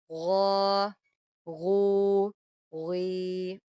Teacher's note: غین جیسے کہ ہم جانتے ہیں کہ حروف مستعلیہ میں سے ہے، اس کو ہم نے موٹا کر کے پڑھنا ہے۔